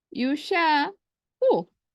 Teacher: the vowel on the ain letter on the first qaf, it got eaten up. It disappeared.